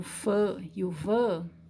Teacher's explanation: se você colocar a mão na frente da sua boca você vai sentir um ventinho saindo por quê porque houve uma obstrução parcial